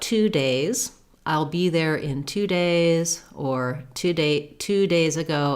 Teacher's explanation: For this TWO, we use the true vowel oo.